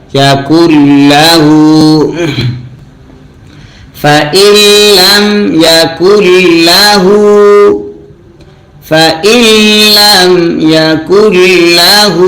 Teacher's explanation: হু পেশ যদি উল্টা হয় এক আলিফ টানতে হয় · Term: উল্টা পেশ